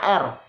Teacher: penyempitan pangkal lidah dan anak tekak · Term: Konsonan geseran atau friktif